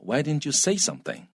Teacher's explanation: 这 句 话 英 文 通 常 重 音 是 在 say 上 面